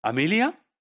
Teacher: after this the tone is low right and then the boundary is again rising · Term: phrase accent